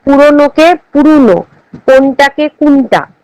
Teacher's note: প্রত্যন্ত পশ্চিমা রাঢ়ী উপভাষায় কখনো কখনো ও উচ্চারিত হয় উ রূপে